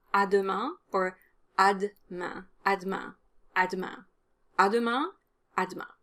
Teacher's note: the french do sound is different from english and it's similar to the french t sound in that the tip of your tongue needs to touch the back of your lower teeth